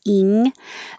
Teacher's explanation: the back of your tongue rising to reach the top of your mouth